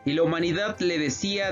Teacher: la segunda palabra está iniciando con h y luego entonces lo que debe de suceder es que debe de contar con una sola sílaba es decir es una sinalefa ella en total tiene nueve sílabas